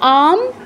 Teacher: আম আতে দীর্ঘ করে তারপর অনুসারে উচ্চারণ করবেন